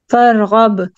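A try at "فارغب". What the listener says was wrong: इसको फरगब रोकना नहीं है, इसको हिलाना है आपने। जब जब इन हरूफ के ऊपर सुकून आएगा तो उसको आपने हिला के पढ़ना है।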